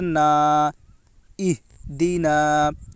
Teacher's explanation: الف سے پہلے زبر ہے، اس لیے الف مدہ ہوگا، الف مدہ کو ایک الف کے برابر کھینچ کر پڑھیں۔ · ہا کے اوپر جزم ہے، جزم والے حرف کو پیچھے والے حرف سے ملا کر پڑھیں۔ اس میں قلقلہ نہیں ہوگا، کیونکہ ہا حروف قلقلہ میں سے نہیں ہے۔